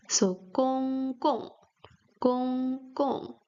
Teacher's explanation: The first character has first tone, gong. The second character has a fourth tone, gong.